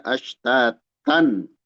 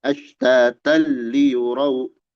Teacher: Dileburkan tapi tidak ada dengung.